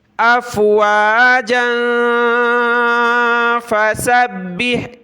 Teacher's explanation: یہاں ہم نے اخفا کرنا ہے، ناک میں آواز پیدا کرنی ہے